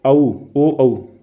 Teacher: दोनों ही आपके कंठोष्ठ में आते हैं।